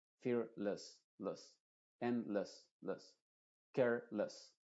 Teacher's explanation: Y en palabras que terminan en less también pasa lo mismo. No se dice fearless con la E muy clara, sino con una schwa.